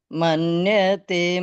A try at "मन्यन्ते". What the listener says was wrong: ये पहली लाइन में आपने मन्यते बोला, ये मन्यन्ते है।